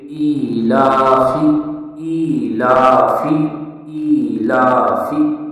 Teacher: हमज़ा खड़ी ज़ेर ई, लाम खड़ा ज़बर ला, ई ला, ई को भी इतना खींचेंगे एक अलिफ के बराबर, और ला को भी एक अलिफ के बराबर